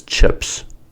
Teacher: P is an unvoiced consonant sound, so the plural will be an unvoiced sound as well